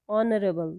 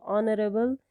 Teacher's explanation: in this word H remains voiceless, it is silent, so we pronounce this word as honorable. So honorable, it has the vowel sound at the beginning, so we will use indefinite article an.